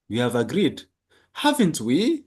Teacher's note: haven't we የሚለው ቦታ ላይ rising intonation አለ።